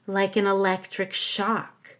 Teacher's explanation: I'm not done so I go up a little on shock